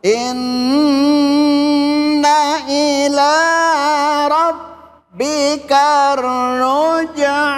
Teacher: Nun mati ketemu roh dibaca idgham bila masuk tanpa berdengung.